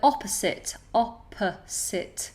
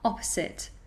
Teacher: make sure that it's an s and not a Zed